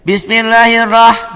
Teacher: Ro-nya juga tadi dibaca tebal tafhim karena ro-nya baris di atas.